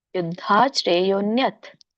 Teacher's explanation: ತ ಕೆಲ್ಲಿ ಸ್ವರ ಇಲ್ಲ ಹಾಗಾಗಿ ವ್ಯಂಜನ ಕೊಡಬೇಕು ಹಾಗಾಗಿ ನೀವು ಅಲ್ಪವಾಗಿ ಉಚ್ಚರಿಸಬೇಕು